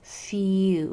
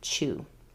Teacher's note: It can say its whole name of the U, as in few. You hear that whole mouth pronunciation of the long U sound, few. Or it can say just that last part, chew, or oo, as in chew.